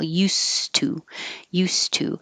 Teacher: if you just said use two you wouldn't hear the D it's going to sound like a a t and nothing at